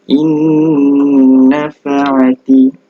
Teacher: Contoh ini adalah nun mati bertemu dengan nun. Okey, mesti dimasukkan dan didengungkan sebanyak 2 harakat. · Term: idgham ma'al ghunnah